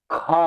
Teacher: ज्यादा देर तक आपका मुंह खुलता है ज्यादा समय लगता है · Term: ज्यादा हवा